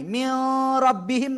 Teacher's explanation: নুন সাকিন বা তানবিনের পরে আসলে গুন্না ছাড়া মিলায়া পড়বো। · ঈদগামে বেলাগুন্না অর্থ গুন্না ছাড়া মিলায়া পড়া।